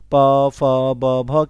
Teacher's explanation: प फ ब भ कह दे तो ये ओष्ठ व्यंजन आपका हो जाएगा